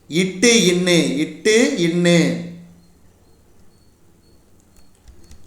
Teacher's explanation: நாவின் நுனி அன்னத்தின் நுனியை பொருந்துவதால் பிறக்கும் எழுத்துகள்